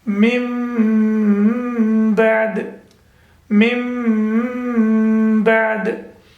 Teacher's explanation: We created a sound of meme with gunna, nasal sound. So we recite it as mim bad.